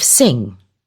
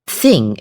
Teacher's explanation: She says thing instead of sing. >> Difficulty in making an s sound and making a th sound instead. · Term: lisp